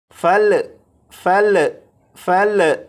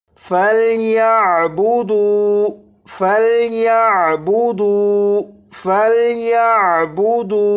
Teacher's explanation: یہاں سے پڑھنا شروع کریں گے، اور یہ جو لفظ ہے یہ ہے فَلْيَعْبُدُوا۔ جب اس لفظ کو پڑھیں گے تو یہ جو لام ہے اس لام پر قلقلہ نہیں کریں گے، یعنی اسے اس طرح سے نہیں پڑھیں گے فل فل فل، اس طرح نہیں، بلکہ فل فل یا بودو فل یا بودو فَلْيَعْبُدُوا فَلْيَعْبُدُوا فَلْيَعْبُدُوا۔